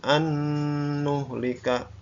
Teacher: Jadi dibaca, dimasukkan dengan dengung.